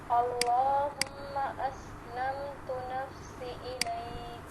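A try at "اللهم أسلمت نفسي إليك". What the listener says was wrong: سی لمبا ہوگا، جائے مدہ ہے.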